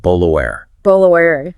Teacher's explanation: Notice how the T inside bottle and water is totally replaced by that glottal stop, that little catch in the throat. It creates that characteristic choppy sound.